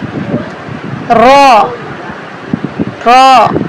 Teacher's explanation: रॉ किस तरह से पढ़ना है, मुंह को गोल करके पुर करके पढ़ना है। रॉ, जुबान जो है ऊपर वाले तालू के साथ जाके लगेगी।